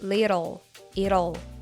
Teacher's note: sounds the schw sound o followed by the L Sound and if you play the words little little slow you will hear the schw sound which is a vowel so that's why we hear a flap te the same rule